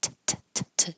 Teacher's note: the last sound T is voiceless, meaning there's no vibration in the vocal fold. So if I said t, t, t, t, t, you won't feel anything, but you'll hear it.